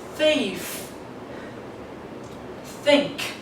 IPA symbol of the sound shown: θ